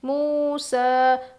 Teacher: میم واو پیش مو، سین کھڑا زبر سا، موسا. اس کا یا لکھا گیا ہے، پڑھا نہیں جائے گا، الف کے جیسے یعنی کھڑا زبر کے برابر کھینچیں گے